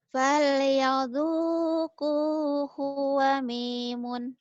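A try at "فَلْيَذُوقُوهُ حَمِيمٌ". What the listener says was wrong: hamimun bukan wamimun. Hu-nya pendek.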